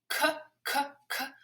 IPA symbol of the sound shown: k